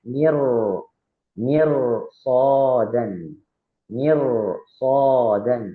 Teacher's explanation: Maka secara bacaan dia juga harus dibaca tebal. Karena di depannya ada huruf isti'la yaitu shod, maka ro-nya harus dibaca tebal.